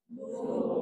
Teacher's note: di awal surah al-qalam akan adalah satu huruf namanya Nun dan dibaca enam harakat satu nafas